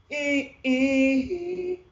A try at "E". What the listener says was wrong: But we want to smile on this, on the E there. E.